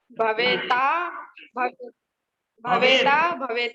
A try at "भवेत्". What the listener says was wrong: भवेत, भवेत अलंत है, भवेत।